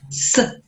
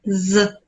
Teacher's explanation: So s, it's unvoiced. And z is voiced vibration.